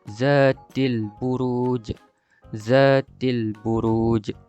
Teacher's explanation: bunyi lantunan pada huruf jim di akhir kalimah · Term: qalqalah kubra